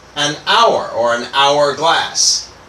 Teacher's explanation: the H is silent. So the first the first vowel sound is actually an O · So even though we often think of H is a consonant, so why don't we say a hourglass? We actually say an hourglass because again the H is silent here.